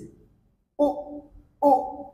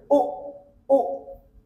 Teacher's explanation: একদম গলার ভেতর থেকে মুখটা গোল হয়ে সাউন্ড হবে ও, ও। যেরকম গুড, ফাস্ট। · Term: শর্ট সাউন্ড